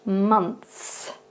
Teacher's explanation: at the beginning of this word, that O sound is more pronounced like a U sound instead.